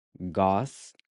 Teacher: So the “a” at the end is pronounced like the /ɐ/ in “Cuba”.